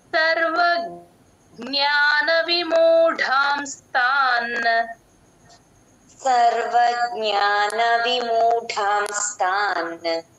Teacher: అక్షరం ఒత్తుగా వచ్చినప్పుడు ముందు అక్షరానికి కలుపుకొని చెప్పాలి సర్వ జ్ఞాన విముడాం స్థాన్ ఆ నా కూడా యూజువల్ గా ఆ నా మింగేస్తారు చాలా మంది వినపడదు ఆ నా కూడా వినిపించాలి నా కి పొల్లు ఉంది కదా అది కూడా · గా ఆ నా మింగేస్తారు చాలా మంది వినపడదు ఆ నా కూడా వినిపించాలి నా కి పొల్లు ఉంది కదా అది కూడా వినపడేటట్టు చెప్పాలి